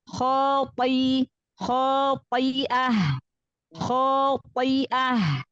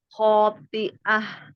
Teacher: Pangkal lidahnya tetap angkat walaupun huruf to yang berharokat kasroh. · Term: huruf tebal